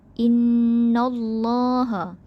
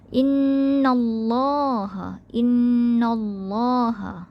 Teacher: Okey, jadi itu adalah taghliz. Kita tebalkan ataupun kita beratkan dia. Beratkan pada Allah.